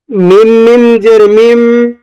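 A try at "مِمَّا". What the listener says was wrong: আর একটু বেশি সময় নিয়ে গুণ করতে হবে।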